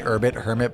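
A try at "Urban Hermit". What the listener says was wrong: Yeah, you said Urbit. Urbit Hermit.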